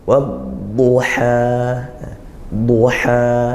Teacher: Jangan sampai, tapi lepaskan matnya satu alif, dibaca panjang satu alif, dan tidak ada sisa atau tertahan dengan bunyi hamzah sukun itu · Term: mad tabi'i